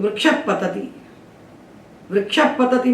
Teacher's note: विसर्ग के बाद हम पा बोलते हैं तो विसर्ग कंठ को छोड़ कर के ओष में जाता जब कंठ को छोड़ के ओ से बोला जाने लगता है